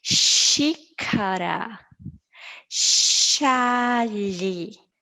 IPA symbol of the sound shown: ʃ